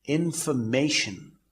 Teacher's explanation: the stress as far as information is concerned is at the 3rd syllable, that is MA